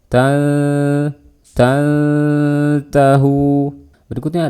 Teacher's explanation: ikhfa kita samarkan suara nun-nya Jangan dibaca Tan ya kalau kita baca Tan itu suara nun-nya